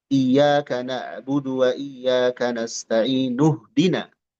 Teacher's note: I-nya enggak akan ada kalau disambung. Tapi kalau memulai darinya ini harus diharakati. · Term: hamzah wasal